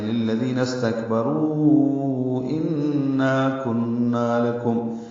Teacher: ان اور کن دونوں میں غنّے ہیں، آواز ناک کے بعد سے مل جائیں گے. · رو را پر ہے، رو واو مد کے بعد حمزہ دوسرے کلمے میں. اب اس کو 4 حرکات ہم لمبا کرتے ہیں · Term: مد منفصل